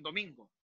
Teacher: La sílaba tónica está constituida por min